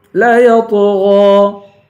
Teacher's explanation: سان، انسان، سین کو ایک الف کی مقدار کھینچ کے پڑھیں گے. لا یطغی، تو کو پر پڑھیں گے، غین کو بھی پر پڑھیں گے